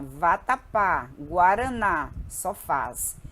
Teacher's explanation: é uma palavra cuja sílaba tônica é a última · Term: palavra oxítona